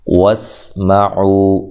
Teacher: سین کو باریک سیٹی سے، عو واو مدہ ہے۔